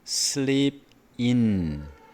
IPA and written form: sliːp ɪn (sleep in)